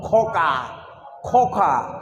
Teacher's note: যেখান থেকে খাকার ফেলি ওই লুল্লুড়িটা ঝুলছে, তাই না? ওইখান থেকে খ উচ্চারণ হবে। · দেখবেন ওই কাকার আরও ভিতর দিকে যেতে হচ্ছে